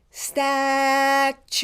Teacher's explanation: the vowel is the long vowel you